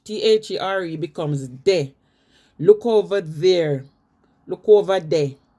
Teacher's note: I don't hear people say this with the tongue between the teeth.